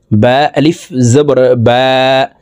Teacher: এখানে এক আলিফ টেনে পড়তে হবে। জবরের বাম পাশে খালি আলিফ আছে।